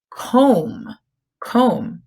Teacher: when M and B are together we hear the M but we don't hear the B the B is silent but we do have to make sure